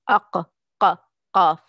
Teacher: from the deepest part of the tongue and what lies opposite to it of the roof of the mouth, soft palate